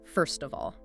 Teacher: In natural speech, we don't usually say first of all with clear breaks. The final T sound in first tends to link smoothly onto the O of. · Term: Consonant to vowel linking